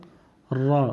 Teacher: ثنایا رباعی ناب ضاحک کے مسوڑے سے را ادا ہوگا